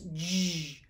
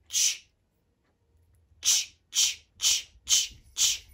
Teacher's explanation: But you kind of put your lips together like that. But instead of saying the j sound, you push out the air to say ch, ch, ch, ch, ch, ch, like a choo-choo train.